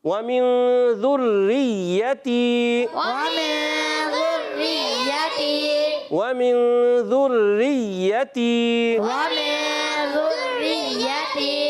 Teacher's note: را پر بھی تشدید ہے, یا پر بھی تشدید ہے, دونوں کو رک کر پڑھیں گے, جلدی نہیں کریں گے.